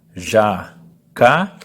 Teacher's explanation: Essa é a sílaba mais forte que a gente fala com mais intensidade. Então, no caso, no jacaré, o ré é mais forte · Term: sílaba tônica